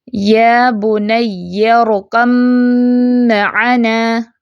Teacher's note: با کی کوئی آواز پہچان باقی نہیں رہے گی، میم کی آواز آئے گی، پڑھنے میں صرف میم سنائی دے گا، یا بنی ارکب معنا، ٹھیک ہے، کب معنا نہیں پڑھیں گے۔